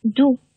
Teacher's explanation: 因为是在元音字母前面，所以这个清辅音▁t，▁你的送气要收掉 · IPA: [t]